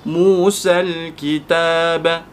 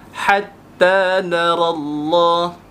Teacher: Daripada sin itu kita tidak membaca alif maksurah tersebut, kita terus lompat kepada lam yang bertanda sukun.